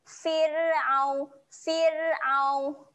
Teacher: Fir huruf ra mati sebelumnya berbaris bawah jadi ro ni dibacakan dengan nipis Oke senyum saja